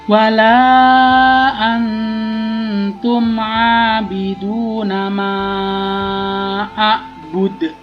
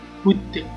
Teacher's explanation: a'bud itu ada mantul-mantulnya ya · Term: qalqalah kubro